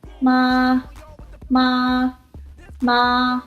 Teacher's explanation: The first tone is a flat tone, and it's the sound you make when you're trying to make a decision. The first tone is high and level. The tone mark for this tone is a flat line.